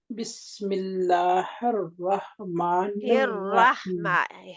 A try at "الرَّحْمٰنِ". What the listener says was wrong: رحمہ، ہر رح نہیں، ہر رحمہ، ہا کے مخرج میں رہیں،